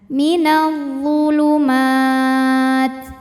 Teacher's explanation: Sebab ada mad tabi'i bertemu huruf yang disukunkan karena waqaf, di mana mad tabi'inya adalah fathah panjang pada huruf mim, kemudian huruf yang disukunkannya ta. Jadi jika berhenti, mim boleh panjang 2, 4 atau 6 harokat asal konsisten dalam sekali bacaan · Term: mad arid li sukun